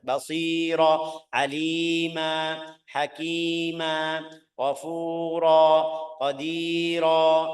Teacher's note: seharus bilang basiran, tapi bacaannya jadi basira, ra dua harakat. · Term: mad iwad